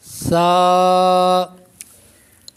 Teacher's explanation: سا کو جب پڑھیں گے تو اس میں سیٹی کی آواز پیدا نہیں ہوگی